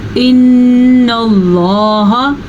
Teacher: अल्लाह का नाम पुर पढ़ा जाएगा क्योंकि अल्लाह के नाम से पहले ज़बर है